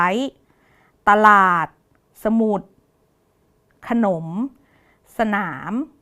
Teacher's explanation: ทั้ง4คำเนี้ยจะอ่านออกเสียงเป็น2พยางค์ทั้งหมดเลยนะคะแล้วก็พยางค์แรกของทุกคำเนี่ยจะเป็นคำที่ประสมสระอะนะคะ เป็นเสียงของพยัญชนะตัวที่1ประสมกับเสียงสระอะนะคะอย่างตัวนี้พยัญชนะตัวที่1คือตเต่าประสมกับเสียงสระอะเป็นตะส่วนพยางค์ที่2เนี่ยจะอ่านออกเสียงเหมือนมีหอนำนะคะจากลลิงลอาดลาดหอนำเป็นหลาดคำนี้ก็จะ